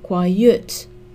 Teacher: The stress in quiet is on the final syllable, quiet. So we add er and est.